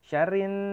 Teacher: Syarrin, rin agak ditahan ya, itu gunnah itu. Syarrin keluarnya lewat hidung